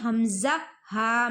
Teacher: حمزہ ہا، حلق کے سینے کی طرف والے حصے سے ادا ہوتے ہیں